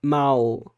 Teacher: Isso não aconteceria, obviamente, em Portugal, porque a realização do L não é feita com essa semivogal, não é feita como U, é feita como, de fato, um L.